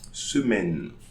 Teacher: So I'm pronouncing the N but not the E, because if I was pronouncing the E, I was going to say semaine.